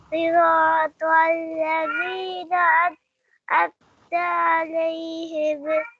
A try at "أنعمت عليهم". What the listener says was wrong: ہمہ نہیں بولنا. انعمت علیہم. ہم. انعمت علیہم.